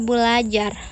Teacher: Mestinya kalau tidak ada perubahan menjadi berajar. Namun karena ada dua bunyi R, maka R yang pertama diperbedakan atau didisimilasikan menjadi L sehingga menjadi kata belajar